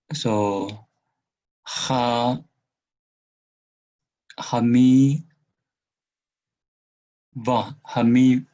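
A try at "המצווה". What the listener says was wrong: This is not ain. This one is tzade. This one is silent schwa. So ha, ham, mitzvah, mitz, z. And then in terms of this dagesh, we need to double it. So this mem is doubled.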